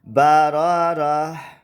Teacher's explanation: اس گول تا کو ہا بنا کر پھر اس کے اوپر جزم پڑھنی، ٹھیک ہے۔ بارارہ یہ تب ہے جب وقف کریں گے، ٹھیک ہے۔